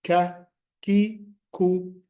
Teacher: After this, we go to the 2 letters coming from the back of the tongue. The back of the tongue rises up to touch the soft plate or the soft palate.